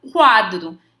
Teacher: semivogal U acompanhado da vogal A. Semivogal U, vogal A. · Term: ditongo crescente